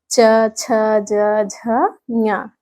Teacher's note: यह हमारा है तालू यह तालू से स्पर्श होके बोला जाता है